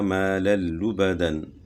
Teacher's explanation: دو زبر کی تنوین کے بعد حروف یر ملون میں سے لام ہے تو یہاں بھی ادغام بلا غنہ ہوگا